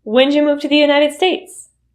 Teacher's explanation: When'ja. The you turns into ja.